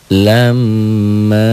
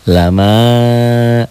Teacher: Lam, M-nya ditahan. M-nya ditahan. A-nya juga ditahan. Karena kebetulan setelah huruf gunnah ada mad tobi'inya.